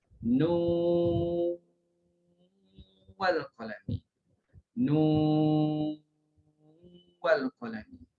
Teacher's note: dia idghamkan nun yang terletak pada ejaan nun awal surah Al-Qalam. Ayat 1 bila kita wasal nun dengan wal qalami, nun wal qalami, nun wal qalami.